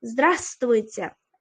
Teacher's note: Здравствуйте degan so'zimizga e'tibor bering. O'rtadagi, ya'ni A dan keyingi V harfi tushib qolyapti. Здравствуйте deb o'qimaysiz.